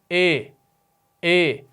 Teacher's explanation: نہ وہ آ ہوگی نہ وہ ای ہوگی، وہ درمیانی ہوگی، اے ہے نا درمیان والی، تو درمیان والی ایک آواز آگی، وہ آگی اے۔ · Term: امالہ